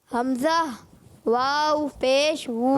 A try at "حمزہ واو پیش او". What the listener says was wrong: حمزہ واو پیش او، وو نہیں بیٹا او، او،